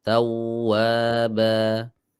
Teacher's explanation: di wawu itu nggak putus suaranya, nggak tawwaba, harus tawwaba.